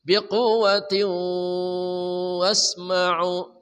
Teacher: Tanwin bertemu waw. Idgham bi gunnah. Hurufnya 4 ya nun mim waw.